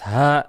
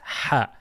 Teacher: The flat one, that's ha, and you have the one that comes from your chest